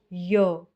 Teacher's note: य का उच्चारण स्थान है तालू